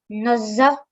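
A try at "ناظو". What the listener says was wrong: The middle one, you still need to make it round. Okay, so nazo.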